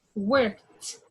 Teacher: The ed is going to be pronounced like t.